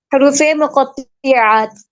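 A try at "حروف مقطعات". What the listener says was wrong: मकतुआत। मकतुआत। तो के नीचे जेर क्यों लगा रहे हैं? मकत हरूफे मकतुआत। मकतुआत। अच्छा जी, हरूफे मकतुआत हैं ये।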